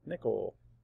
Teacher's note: the reason the I is not a schwa is because it's in the stressed part of the syllable. It's a stressed syllable.